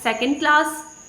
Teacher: the stress is on the class, not on the second.